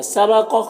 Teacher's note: سبق قاف حروف مستعلیہ میں سے پر پڑھیں گے